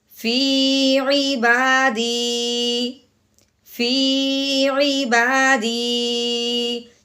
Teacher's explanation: صرف اپنا لہجہ چینج کرنا ہے یعنی کہ آواز اپنی نیچے کو لے کے آنی ہے اور اس میں کچھ تبدیلی نہیں کرنی ہے. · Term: وقف